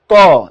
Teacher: বাতাস কণ্ঠমূলে আটকা পারছে